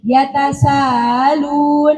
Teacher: Tasil itu apa? Antara hamzah dan alif. Jadi yatasalun.